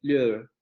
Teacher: con la vocal media cerrada, central posterior, labializada, más la vocal central